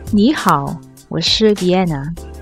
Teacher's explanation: 你 here is pronounced using the second tone.